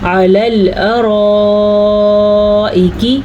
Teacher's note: آسان طریقہ آپ یہ لے لیں کہ آپ 6 سیکنڈ تک اس کو لمبا کر لیں، آپ کی مد ادا ہو جائے گی